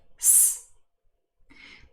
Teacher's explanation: the adjective nice ends in s. This is a voiceless fricative, s. But this s changes because the following word, shoes, starts with the fricative sh.